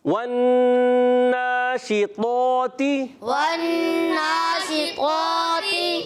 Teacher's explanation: طا موٹا کرنا ہے، تا باریک رکھنا ہے